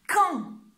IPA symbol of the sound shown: kɑ̃